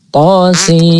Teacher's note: Nunnya supaya tidak dibaca dengung ya, tidak dibaca dengung